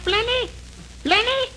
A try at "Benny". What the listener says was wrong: No, Benny. The L is silent in there.